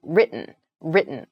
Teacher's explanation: it sounds more like a D sound almost so the T sound is very soft